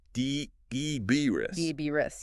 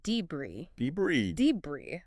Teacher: Yeah, that s is silent. And the stress is on the second syllable. And once again, we have a word where the pronunciation is pretty much universal across the US, UK, Australia.